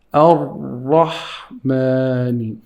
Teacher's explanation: This Ra over here, in the word Ar-Rahman, it should be heavy. You have to say Ar-Rahmani.